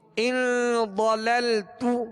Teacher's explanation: تو پیش ادا کریں گے تو جی ان ضللت. ضاد کو پر پڑھیں گے اس لیے کہ یہ حروف مستعلیہ میں سے